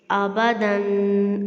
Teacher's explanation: تو یہاں پہ آپ پڑھیں گے حمزہ زبر آ، با زبر با، دال دو زبر دن، آبادن، ٹھیک ہے، دن۔ اب دال کے دیکھیں تنوین کے بعد الف آ رہا ہے تو یہاں پہ ہم غنہ کریں گے، آبادن۔ اب دیکھیں حمزہ زبر آ تھا اور با زبر با، یہ ایک ساتھ حرکت آئیں گے، ٹھیک ہے، تو آپ نے ان کو ایک سانس سے پڑھنا ہے، آپ نے حرکات کو لمبا نہیں کرنا۔